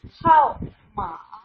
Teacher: How with fourth tone